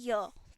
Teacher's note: तो य का साउंड जो है यह तालु से आ रहा है